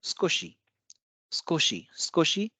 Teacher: सुकोशी लिखा जाता है सुकोशी, लेकिन उच्चारण है स्कोशी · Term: डिवॉइसिंग